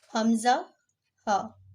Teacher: یہ اقصی حلق سے ادا ہوتے ہیں، یعنی کہ حلق کے اس حصے سے ادا ہوتے ہیں جو سینے کی طرف ہے۔